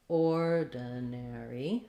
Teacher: so ordinary is stressed on the or